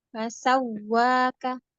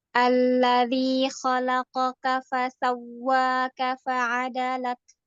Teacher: dia nabar wawnya tapi dia rohwah ya, jadi tidak keputus. Sambung tasdidnya.